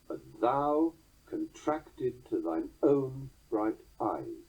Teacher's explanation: Pyrrhic substitution results, as you heard, in 3 unaccented beats in a row, which are resolved by the next accent, in this case, own.